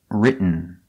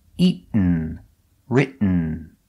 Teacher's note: you don't make the t you stop writ and then you fall to an n written this is the same pronunciation at the end of eaton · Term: stop t